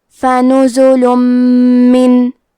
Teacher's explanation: میم حروف الادغام بغنہ میں سے ہے، تو ہم یہ حکم کو غنہ اور تشدید کے ساتھ ادا کریں گے.